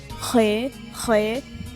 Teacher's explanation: So you're going to bring the back of your tongue up, but you're not going to touch the roof of your mouth, and then you're just going to expel air and it'll make the sound.